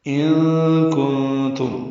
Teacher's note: نون ساکن کے بعد کاف اور نون ساکن کے بعد تا آنے کی وجہ سے ان اخفا ہے، کن اخفا ہے، نون کی آواز چھپائیں گے